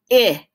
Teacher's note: My larynx vibrates when I say it, eh, and that means it's voiced. So it's a voiced sound.